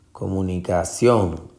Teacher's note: Es ción la sílaba tónica y lleva tilde